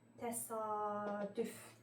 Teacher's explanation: Deməli, təsadüf sözündə hə ikinci saitin uzanması müşahidə olunur əslində.